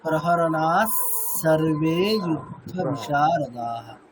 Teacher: এরকম নেক্সট আর একটা দেখুন, নানা শস্ত্র প্রহরণাহা, তারপরে কি আছে, দন্তীয় স আছে, হ্যাঁ, তাহলে বিসর্গ সার্বে কি হয়ে যাবে, দন্তীয় স হয়ে যাবে